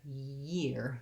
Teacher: The difference is basically that I have the same thing that I have with ear, but an extra glide at the beginning.